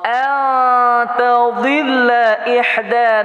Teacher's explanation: nun mati bertemu dengan ta, hukumnya ikhfa berdengung dua harakah. Ihda damat asli atau mat tab'i, panjangnya 2 harakah.